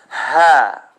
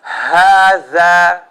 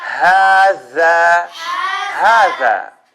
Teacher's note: It's coming from the first part of my throat.